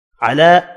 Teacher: علی کھڑی زبر ہے, ایک الف کی مقدار میں کھینچ کر پڑھیں گے